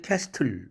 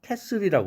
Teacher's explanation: CASTLE인데 트가 소리가 안 나요.